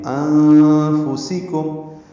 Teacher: انفسکم میں نون ساکن کے بعد فانی کی وجہ سے اخفاء ہے، یہ اخفاء حقیقی ہے، نون کی آواز چھپائیں گے